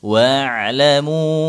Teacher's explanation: Mu dibaca empat harakat setelah huruf mad di depannya ada hamzah mad jaiz munfasil karena beda kata ya.